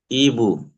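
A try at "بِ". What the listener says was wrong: ই বু নয়, ই বি আছে দেখেন। বাজের বি।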